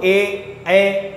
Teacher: कंठ और तालव्य के द्वारा बोले जाते हैं इसलिए इनको कंठ तालव्य के नाम से जानते हैं